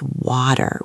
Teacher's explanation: In American English, it's water with this T that sounds like a D.